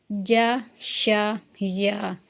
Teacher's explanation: یہ تینوں حروف جو ہیں یہ باریک ادا ہوں گے، یہ موٹے نہیں ہوں گے